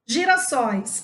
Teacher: e girafas o primeiro é se fica na segunda sílaba sóis ou seja a última sílaba é a mais forte por isso é oxítona